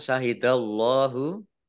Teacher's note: Allahnya dibaca tebal karena harokat di depannya fathah. Fathah berdiri, mad tobi'i.